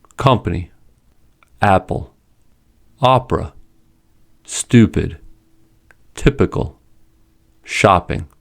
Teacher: When P does not come at the beginning and does not begin a stressed syllable, it is not aspirated. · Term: unaspirated